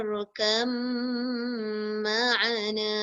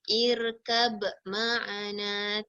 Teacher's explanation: terus bunyi dia punya mim. Ba dia tak bunyi